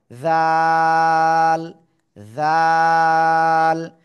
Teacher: জিহ্বার আগা উপরে দুই দাঁতের আগার সঙ্গে লাগান লাগান লাগান লাগান, নরম করে 1 2 3 আলিফ টেনে পড়তে হবে